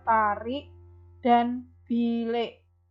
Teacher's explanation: I dilafalkan E seperti ada E-nya pada kata tarik dan bilik. Jadi seolah-olah ada E, sifatnya tertutup ya.